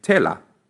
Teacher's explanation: The letter T is pronounced as in English, although your tongue has to touch the back of your teeth, as in tea and test.